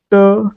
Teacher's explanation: त, त चा उच्चार करताना आपली जीभ दातांना स्पर्श करते, बरोबर आहे. ट, ट चा उच्चार करताना आपली जीभ आपल्या मूर्धेला स्पर्श करते